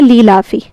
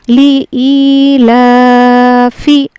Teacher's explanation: لام زیر لی اور حمزہ یا زیر ای، اس کو یا مدہ ہے، کھینچ کر پڑھنا ہے